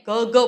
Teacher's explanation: ગ ઘ બોલીએ છીએ ત્યારે ત્યાં આપણી સ્વરપેટી છે ને સહેજ ખુલતી હોય એવું આપણને લાગે છે નાદતંત્રી સહેજ કંપન અનુભવે છે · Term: ઘોષ